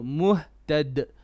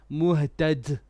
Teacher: it is a common mistake to also bring hams on letters without hams. Hams meaning letting air go. So the letter dal has no hams.